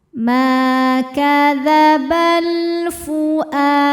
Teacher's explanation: karena ada alif lam menghadapi huruf qamariyah yaitu fa, maka lam sukun dibaca izhar atau jelas. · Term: alif lam qamariyah